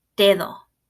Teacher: if you listen to the last syllable it sounds almost like it's a th sound